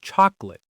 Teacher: Many native speakers say chocolate, dropping that middle vowel sound